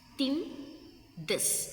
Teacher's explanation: Dental, our tongue tip near the teeth